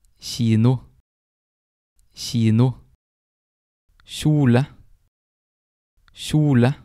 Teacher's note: The K can also have a sh sound, and that is usually when it's in front of an I or a J.